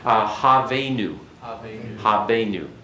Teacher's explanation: in the modern Jewish pronunciation, the cheth does not show up as guttural as what it is in the classical